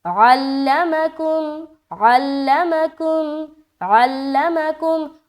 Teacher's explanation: عین بھی ادا ہو رہی ہے، لام میں جماؤ کے ساتھ آواز رک بھی رہا ہے، اور مکم یہ بھی ہو رہا ہے. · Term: تشدید